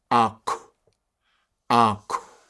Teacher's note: At the end of a word, if you had a KW at the end, it would go ak, ak. We'd have this little puff of air at the end.